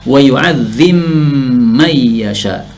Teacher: Wa yu'adzibu, bu-nya diubah menjadi yu'adzib, diubah sukun. Setelah itu ba-nya dimasukkan pada mim, diidghamkan pada mim menjadi wa yu'adzim may yasha. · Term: idgham kabir